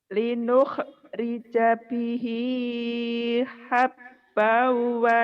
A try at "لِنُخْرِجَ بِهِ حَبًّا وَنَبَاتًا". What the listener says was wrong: Habbaunya agak ditambahin sedikit. Idiom digunakan habbau gitu ya ditambahin. لنخرج به حبا ونباتا.